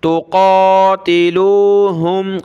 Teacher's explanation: قاف پہ کھڑا زبر ہے، ایک الف کی لمٹ میں اوپر کھینچیں گے